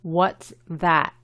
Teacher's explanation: Se pronuncia A. Y la T, como es al final, no se pronuncia completamente. What's that?